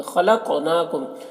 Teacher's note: خا کو پر پڑھیں گے، یہ حروف مستعلیہ میں سے ہے۔